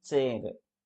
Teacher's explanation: TSH, టీ sound SH sound కలిపితే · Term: ఎఫ్రికేటివ్స్